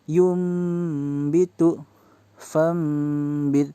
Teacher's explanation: Mengganti bacaan nun mati menjadi mim. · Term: iqlab